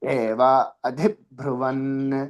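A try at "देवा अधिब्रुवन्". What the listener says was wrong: దేవా దీర్ఘం ఉంది అక్కడ. దేవా అధిబ్రువన్.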